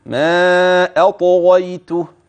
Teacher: بدون ان يدري لذا نصيحه عند هذه الكلمه هدئ من السرعه حتى تحقق الترقيق في الهمز وتفخم الطاء وتقلقل ايضا والغين ثم ترجع بخفه واطمئنان الى ترقيق الياء والتاء والهاء